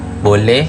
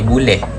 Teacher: setiap perkataan yang mempunyai vokal O akan diubah kepada vokal U.